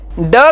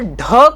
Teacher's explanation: ड का जब हम उच्चारण करते हैं तो ड अल्पप्राण है, और ढ का जब हम उच्चारण करते हैं तो ड प्लस ह आ ही जाता है, इसलिए ढ भी महाप्राण है।